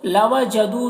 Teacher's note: دو میں دیکھیے واو مدہ ہے، اسے ایک الف کے برابر کھینچ کر پڑھیں گے